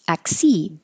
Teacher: Just ac, your tongue goes to the K position, ac, and then seed